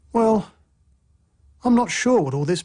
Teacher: a full Rising tone expresses uncertainty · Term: fall rising tone